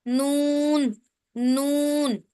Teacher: जुबान का किनारा जब सनाया, रुबाई और अनियाब के मसूड़ों से लगे तो यहाँ से नून अदा निकलता है।